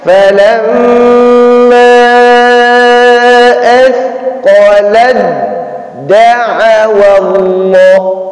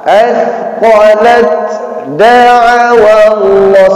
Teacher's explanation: Ya, maka cara bacanya falamma asqalad da'awa Allah. Maka tidak terdengar desis dari ta.